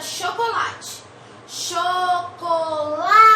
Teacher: A sílaba tônica é o lá.